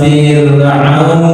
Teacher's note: Jadi tidak boleh dibaca tebal karena sebelumnya ini kasroh ya